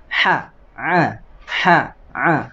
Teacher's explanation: Huruf ha ada di wasatul halqi, tenggorokan bagian tengah.